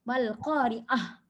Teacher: Ta marbutah ni dia memang kat hujung ya. Memang kat hujung perkataan ya. Kalau kita berhenti pada dia memang dia tukar. Dia tukar jadi huruf ha. Mal qari'ah, tak bunyi ta dah ya.